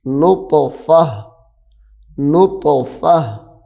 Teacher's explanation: اب آگے وقف کرنا ہے ہم نے، تو یہاں پہ تا کے نیچے دو زیریں ہیں، اب جب وقف کریں گے یہ تا ہا میں بدل جائے گی